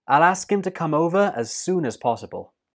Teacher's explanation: soon is stressed and as is pronounced us the last sound in soon is the n and that links